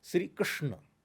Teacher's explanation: जब हम षटकोण वाला स बोलेंगे तो जीभ पीछे की तरफ टर्न होती है, तालव्य श है।